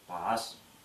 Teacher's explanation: В тувинском языке в начале слова она произносится глухо, как русское П.